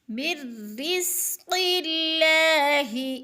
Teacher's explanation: رزق اللہ، زا کو سیٹی کی آواز میں سختی سے، اللہ، قاف موٹے حروف میں سے اور اللہ باریک پڑھا جائے گا کیونکہ اللہ سے پہلے حرف کے نیچے قاف کے نیچے زیر